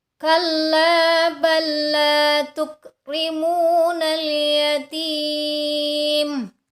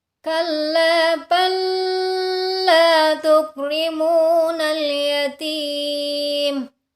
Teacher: Suara lamnya hanya ditekan, tidak ditahan.